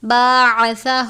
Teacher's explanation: سا کو نرمی سے پڑھتے ہیں، عین کو باریک پڑھتے ہیں